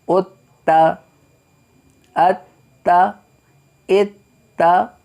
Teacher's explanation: اب دیکھیں تا میں مشدد حروف ہے، مشدد کو ہم 2 دفعہ پڑھ رہے ہیں، تا کو ہم 2 دفعہ پڑھ رہے ہیں